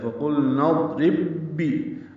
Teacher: اب تھوڑا دبا کر پڑھیں گے تاکہ دونوں بائیں ادا ہو جائیں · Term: ادغام مثلین